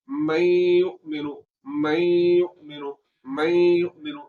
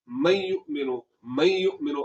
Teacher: तो गुन्ना किस तरह होगा, इस तरह होगा कि हमने आवाज को नाक में ले जाकर थोड़ा सा लंबा करना है